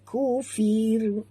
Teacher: Jadi dia tak ada baris. Jadi bila diberhenti dibaca tipis kerana dia mengikut kepada baris huruf sebelumnya.